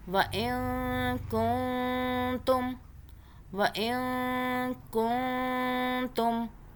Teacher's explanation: وَإِن كُنتُم، اب یہاں پہ دیکھیے نون ساکن کا پھر سے قاعدہ، نون ساکن کے آگے کاف اخفا کا حرف ہے، پھر اگلا نون ساکن اس کے آگے تا اخفا کا حرف ہے، اس لیے دونوں پہ ہم اخفا کریں گے نون ساکن کے اوپر 2 سیکنڈ کا نون کو ہم چھپا کے پڑھیں گے زبان کو تالو سے ٹچ کیے بغیر